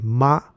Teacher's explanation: when you say ma it's using a flat tone which is represented by the flat line